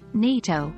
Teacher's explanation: the acronym NATO for the North Atlantic Treaty Organization has the stress on the first syllable rather than the second syllable of Atlantic in the full phrase